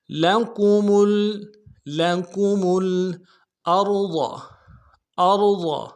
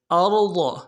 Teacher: ارض میں حمزہ کو را کے سامنے لانا ہے، را کو موٹا کریں گے، ضاد کو موٹا کریں گے